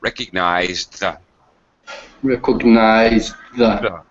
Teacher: with my tongue really really fast I have to tell you my tongue is in the D position and I slide it forward to hit my teeth · So I'm voicing the, but it's really, really fast. So I'm actually continuing to voice, and I just continue, and I just slide my tongue forward. So there's no pause between the words. · we're not going to drop our tongue from the top of our mouth. So that's called an unreleased sound. Sounds like K and T and D, where you snap your tongue down to make a puff of air.